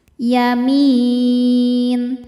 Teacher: Lalu ada alif lam qamariah. Karena alif lam menghadapi huruf qamariah yaitu ya, maka lam dibaca jelas.